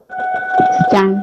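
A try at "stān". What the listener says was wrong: So, why do you say it is stand? Is it a long vowel or a short vowel? See, there is one hyphen above A, right? There is a hyphen above A. There is a bar.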